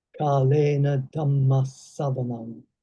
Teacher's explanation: the double S was more pronounced on the second recitation than on the first